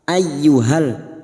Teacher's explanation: masuk pada huruf ya yang bertasdid hanya masuk tanpa mendengung tanpa ditahan lama-lama